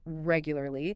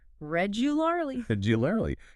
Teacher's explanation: when you make the adverb regularly, that second a sound, the one after the L, often gets reduced, swallowed into awah.